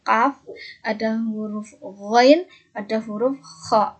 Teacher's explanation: pangkal lidah bertemu dengan langit-langit lunak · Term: konsonan dorsovelar